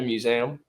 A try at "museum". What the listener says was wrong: Museum. You roast us for our Philly accent. I'm gonna roast you for this. Museum. It's an E, not an A.